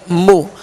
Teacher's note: میم پر پیش ہے، ہونٹوں کو گول کر کے بغیر کھینچے بغیر جھٹکا دیے معروف طریقے سے ادا کریں گے